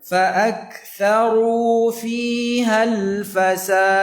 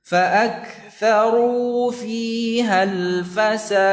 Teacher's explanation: ingat ra dhammah semuanya dibaca dengan tebal